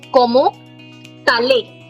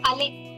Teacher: The vowel is pulling the last letter and it becomes como tale. Not ale, it becomes tale.